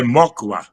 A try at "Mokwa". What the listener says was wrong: Quase. É Mocva. O K é mudo e o W se pronuncia como fosse como um V. Mas tá quase lá. Você foi um dos poucos que chegou bem perto.